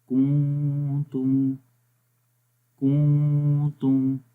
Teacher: آواز ناک میں گونج رہی ہے، یہ اخفا ہے. آواز نون کی ہم چھپا کر پڑھ رہے ہیں ناک کے اندر